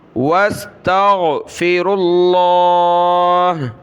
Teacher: را کو آگے لفظ اللہ کے ساتھ ملانا ہے